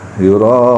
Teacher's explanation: Ro-nya dibaca agak panjang ya dibanding mad yang biasa. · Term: Mad wajib muttasil